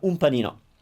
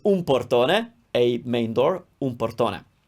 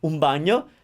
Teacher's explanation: It's really hard to have an n sound followed by a p, and that n usually becomes a little bit of a m sound, like just a little nuance, but un panino.